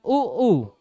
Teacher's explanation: तो कहने का मतलब ओष्ठ के बिना आप क्या नहीं बोल सकते? उ ऊ नहीं बोल सकते।